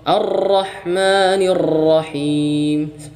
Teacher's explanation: cukup sekali getaran ya atau paling-paling apa namanya maksimalnya dua getaran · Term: taqrir